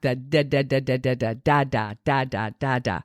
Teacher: the tongue tip or maybe even just a little bit further back